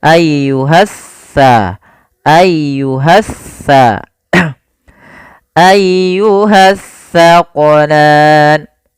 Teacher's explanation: Nah, sering terjadi kesalahan, banyak di antara kita membaca huruf sa dan sin dibaca sama padahal dia berbeda. Yang mana kalau sa ujung lidah kita wajib menempel dengan gigi seri depan, sedangkan sin dia di tengah-tengah lidah. · Alif lam yang dia tertulis tapi tidak dibaca lamnya. sehingga langsung diidghamkan ke huruf setelahnya. Jadi seakan-akan huruf sin ya, maaf huruf sa ini double, sa-nya dua. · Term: alif lam syamsiyah